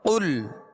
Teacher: مخارج کی تفصیلات: قاف لام پیش قل، قاف پر پڑھیں گے اس لیے کہ یہ حروف مستعلیہ میں سے ہے، اور لام کا جو سکون ہے، جزم ہے، اس میں جنبش پیدا نہ ہو